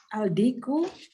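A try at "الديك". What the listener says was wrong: Nah, di sini aldiku kita ini dal ini huruf syamsiyah. Jadi lamnya nggak nampak. Lamnya masuk ke dal. Bacanya adiku, bukan aldiku tetapi adiku.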